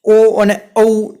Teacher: કંઠ અને હોઠ બંનેનો ઉપયોગ થાય છે. એટલા માટે ઓ અને ઔ જે સ્વર છે એનો પ્રકાર કહેવાય કંઠોષ્ટ્ય, કે કંઠ અને હોઠ બંનેનો ઉપયોગ તેમાં થાય છે.